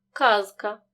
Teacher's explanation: дзвінкий перед глухим не оглушуємо наприклад у слові казка дзвінки з перед глухим к вимовляємо чітко